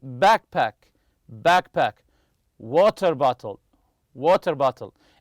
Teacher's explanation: they're made of two separate nouns the stress always remember this the stress goes on the first part of the compound noun